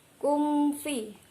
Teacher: mim sukun bertemu huruf fa. Termasuk hukum bacaan idhar syafawi, dibaca jelas dan terang.